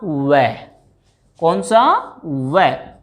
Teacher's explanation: यहां पर वै पहले टकराया कहां? दांतों से, उसके बाद में कहां रुक रही है ध्वनि? होठों पर। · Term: दंतोष्ठ